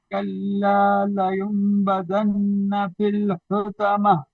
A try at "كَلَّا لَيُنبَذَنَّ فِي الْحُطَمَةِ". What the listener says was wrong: ہاں اس میں نا لینبذن یہاں پہ نون ہے مشدد، یہاں پہ غنہ کریں گے. کلا لینبذن فی الحطمہ.